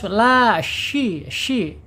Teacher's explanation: alisannya itu tengah lidah di punggungnya naik terangkat ya tetapi dia tidak ada penekanan di langit-langit. Kemudian secara sifat ada di alhamsy mengalir yang pertama ya mengalir. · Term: huruf syin